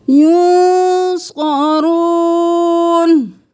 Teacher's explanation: ولا ہم نہیں کرنا، الف مدہ ہے کھینچیں. اور نون ساکن ہے تو غنہ کریں. صاد موٹا ہے، رو موٹا ہے.